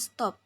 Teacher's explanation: Contohnya pada kata top, diucapkan top dengan T apikodental, tetapi setelah mendapatkan S laminopalatal pada kata stop, kata tersebut diucapkan stop dengan bunyi T juga laminopalatal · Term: asimilasi progresif